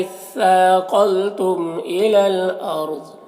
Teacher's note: यहाँ पर वाय साकिना से पहले अलिफ के ऊपर ज़बर है तो रॉ को पुर पढ़ेंगे, ज़ाद को भी पुर पढ़ेंगे, ये हुरूफ़ मुस्तालिया में से है और वक्फ़ की सूरत में ये ज़ाद साकिन हो जाएगा